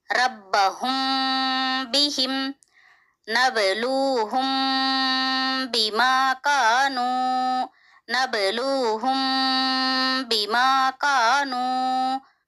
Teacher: ربہم بہم، یہاں پہ دیکھیے میم ساکن کے بعد دوسرے کلمے میں با آیا ہوا ہے، یہاں پہ ہم میم کو غنے کے ساتھ اخفا کے ساتھ ادا کریں گے